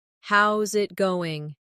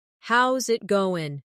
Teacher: The is disappears and the final G in going often softens. This is called connected speech.